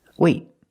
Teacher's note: I don't release the T. It's a stop T. I stop the air. I stop the air with my tongue in the T position.